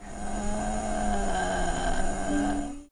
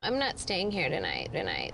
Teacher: it's a low creaky vibration produced by a fluttering of the vocal cords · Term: vocal fry